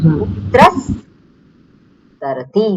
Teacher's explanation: દંત્ય તકાર છે તો દંત્ય સકાર થઈ જાય